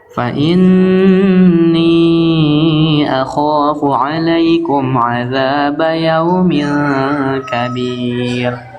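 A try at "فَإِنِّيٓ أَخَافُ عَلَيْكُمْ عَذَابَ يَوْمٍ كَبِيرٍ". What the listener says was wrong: Bagus. Masya Allah.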